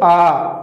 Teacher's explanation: ऐसा स्वर जिनके उच्चारण करने में मुंह द्वार जो होता है बिल्कुल ओपन हो जाता है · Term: विवृत स्वर